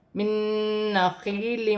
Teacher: نون ساکن کے بعد نون مشدد آ رہی ہے تو یہاں نون ساکن میں بھی غنہ ہوگا